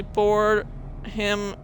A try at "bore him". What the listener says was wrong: Bore him? You said bored him.